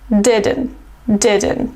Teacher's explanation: So I didn't go to the gym last Sunday, and the contraction of did not is didn't. Try to make a stop T here and don't release the puff of air when you say T sound.